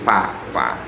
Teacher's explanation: huruf fa itu gigi seri atas dengan bibir bawah bagian dalam. Jadi fa. Kalau masih bibir ketemu bibir itu enggak, bukan huruf fa.